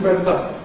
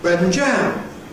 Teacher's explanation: You can just hear [ m̩ ] before ‘butter’.